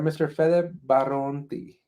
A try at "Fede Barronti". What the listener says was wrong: Yeah, well, just one R, but it's okay. It's well pronounced and it's nice.